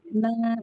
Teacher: Sami'na, naknya panjang 2 harokat.